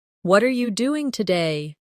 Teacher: For example, when someone says, "What are you doing today?" the stress usually falls on what and doing.